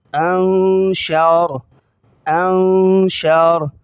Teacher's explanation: یہاں را کو موٹا کریں گے، را کی زبر کو ظاہر نہیں کریں گے جب ہم رکیں گے